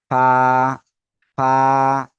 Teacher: যে বড় দুই দাঁত আছে না আপনাদেরও এরকম দাঁত আছে কিন্তু নিচের ঠোঁটের পেট সামনের উপরের দুই দাঁতের আগার সঙ্গে লাগিয়ে আমরা উচ্চারণ করব